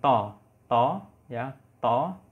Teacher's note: Tapi klasifikasi bunyinya dia itu tidak bersuara atau femin. Berarti apa? Mahmus dan tebal atau tafkhim.